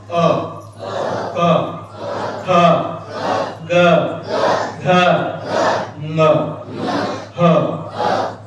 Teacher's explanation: अरे काय म्हणून याला कंठ वर्ण म्हणतात. ज्या वर्णांचा उच्चार करण्यासाठी आपली जिव्हा कंठाचा स्पर्श करते त्या वर्णांना कंठ वर्ण असे म्हणतात.